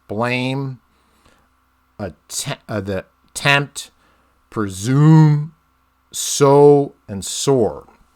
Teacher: you get five emphasized syllables right so this is five beats five feet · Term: iambic pentameter